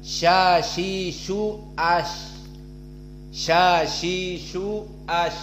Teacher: Sya adalah wastul lisan dengan al-hanak al-a'la. Di sini tengah dari lisan.